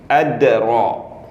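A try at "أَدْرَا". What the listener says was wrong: Ro nggak boleh monyong. Ro. Ro. Ini ro. Ro. Nah, ade ro.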